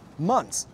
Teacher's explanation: so get rid of the “TH” sound altogether